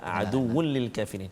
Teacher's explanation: Hukum dia idgham bila gunnah. Maksudnya masukkan bunyi tanwin tu ke dalam lam tanpa dengung